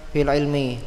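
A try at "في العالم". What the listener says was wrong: Fil alami. Ya, alam ya. Bukan alim tapi alam.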